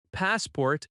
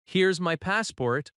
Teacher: if you say, Here's my passport. with a gentle falling tone, it sounds friendly and cooperative